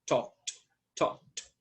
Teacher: Para talk, que suena como K y termina en K, la pronunciación de esa ed es como una T.